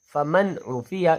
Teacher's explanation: حروف ہیں حروف حلقی ان میں سے عین ہے، اس لیے فما عفیہ نہیں فمن عفیہ، نون کو ظاہر کر کے پڑھا جائے گا ۔ من اخیہ، من اذن، کتاب حکیم، کتاب حکیم نہیں پڑھنا